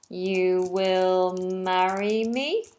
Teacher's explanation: that Rising tone at the end makes the question